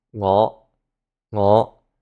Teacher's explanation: the Z here means a low rising tone